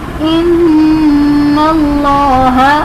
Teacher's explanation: نون مشدد ہے تو اس میں ہم غنہ کریں گے یعنی ایک الف کی مقدار کے برابر آواز ناک میں روک کر رکھیں گے